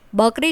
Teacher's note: બકરી શબ્દમાં હોઠ વિના બ નો ઉચ્ચાર નથી થતો માત્ર કરી એટલું જ બોલી શકાય છે. એવી જ રીતે ધ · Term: ઓષ્ટય વ્યંજન